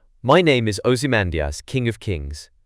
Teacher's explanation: 5 pairs of syllables per line, with the stress on the second syllable of each pair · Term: iambic pentameter